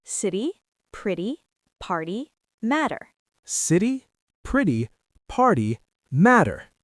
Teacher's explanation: It's like a very fast D sound. Not a hard T, not a hard D, just a quick tap. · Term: flap T